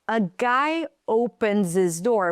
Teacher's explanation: We drop the H so we can connect it.